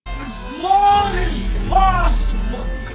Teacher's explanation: Also notice how short the word as becomes, even in slow motion.